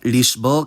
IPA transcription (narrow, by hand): liʃˈbɔʁ̞